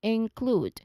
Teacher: So you move from the N sound, which is the last sound for the first syllable, into the KL blend, okay, which is our starting sound in the second syllable.